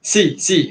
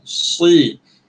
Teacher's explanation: Kalau Sin, si. Dia lepas angin. Kalau Sod, tahan.